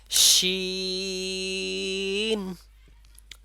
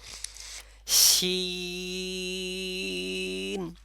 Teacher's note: আর আমার জিহ্বাটা কোথায় ছিল মাঝ বরাবর ছিল এবং উপরে তালুর সাথে লেগেছে শিন আর ঠোঁটটা আমার বিস্তৃত অবস্থায় ছিল আপনাদেরও দুই সাইডে বিস্তৃত